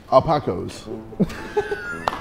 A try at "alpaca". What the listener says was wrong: Yeah, it's an alpaca. It's very similar, but the last vowel at the end is an A, not an O.